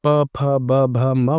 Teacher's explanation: और जब आप प भ म बोलेंगे तो ये होठ का प्रयोग आप कर रहे हैं हवा को रोकने के लिए तो ये ओष्ठ व्यंजन के अंतर्गत आते हैं।